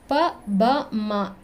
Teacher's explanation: ಇದು ತುಟಿಗಳ ಸಹಾಯದಿಂದ ಉಚ್ಚಾರಣೆ ಮಾಡುವಂತದ್ದು ಓಷ್ಟ್ಯ